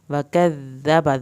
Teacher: دال کی شد پہ ہلکا دباؤ ڈالیں گے، دال کو نرمی سے ادا کریں گے